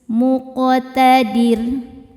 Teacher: Karena sebelum ro disukunkan ada baris kasrah, maka ro-nya tipis. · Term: tarqiq